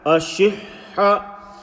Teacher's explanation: Continue the Ha, Sakin and the Ha with the Fatha sound. Don't break your breath.